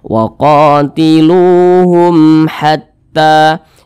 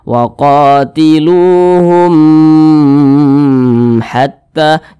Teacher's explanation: huruf mim di sini maka ini hukum nya adalah izhar syafawi izhar syafawi dibaca jelas tidak berdengung jadi dibaca pendek saja waqum Hatta Jangan dibaca waqatiluhum Hatta jangan dipanjangkan seperti itu jangan